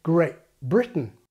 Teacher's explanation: the glottal stop is a replacement for /t/ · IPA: Greaʔ Britain